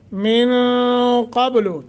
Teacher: نون ساکن کے بعد قاف حروف اخفا میں سے یہاں اخفا کریں گے۔ قب، قاف کو موٹا، با پہ قلقلہ۔